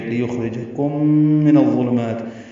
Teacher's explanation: ہمس ہوگا اور اس کو پر پڑھیں گے، را باریک ہے، کم میں میم ساکن کے بعد میم آنے کی وجہ سے ادغام ہوگا، غنہ بھی کریں گے یہاں پہ